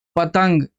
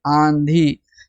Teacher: नून की जो आवाज है वह जाहिर नहीं होती है और इसमें नाक से आवाज निकलती है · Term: नून गुन्ना